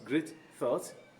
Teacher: thought starting in th which is a dental sound if we are to pronounce that how do we pronounce it